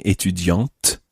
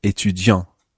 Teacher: So the feminine version ends in te, which gives the t ending, étudiante. And the masculine version just ends in t. So that gives this nasal sound, étudiant. As we go through today's lesson, we'll be coming across a number of words which change depending on whether the person is male or female.